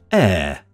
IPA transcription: eə